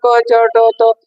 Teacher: अल्पप्राणांचा उच्चार करताना क च ट त याचा उच्चार करताना तेवढासा दाब येत नाही